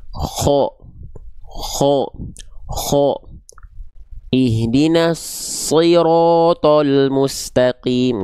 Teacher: Vokal tebal vokal yang kita dengar seperti O itu bukan karena bertumpu pada bibir tapi pada pangkal lidah naik